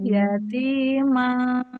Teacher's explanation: Ma langsung naikin ke hidung. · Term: dengung samar